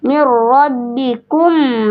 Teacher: Lalu berarti ya sukun bertemu ro harus dibaca jelas, tidak boleh didengung. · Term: izhar syafawi